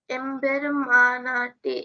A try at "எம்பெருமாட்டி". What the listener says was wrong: No, not na. எம்பெருமாட்டி. எம்பெருமாட்டி.